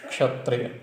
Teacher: जैसे क्षत्रिय, कक्षा, क्षत्रिय, तो क्ष, इसमें क्या क्या है? क और श, मूर्धन्य श, इसलिए क्ष बोला